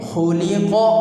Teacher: خلق جو پہلی مثال ہے اس میں موٹے حروف میں سے خا یہ موٹے حروف میں سے ہے، قاف بھی موٹے حروف میں سے ہے لیکن اس کے اوپر زبر ہے، ہم پیش کی بات کر رہے ہیں، تو خا کے اوپر پیش ہے، اس لیے یہ موٹے حروف میں سے تیسرے درجے میں آئے گی، یعنی پہلے 2 درجوں سے تھوڑا سا کم اس کو پر پڑھیں گے